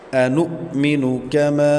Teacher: نون کے بعد حمزہ ساکن، اس کو جھٹکا دینا ہے